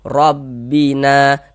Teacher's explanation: dibaca tabkhim. Tebalkan huruf rnya rbina na dibaca panjang.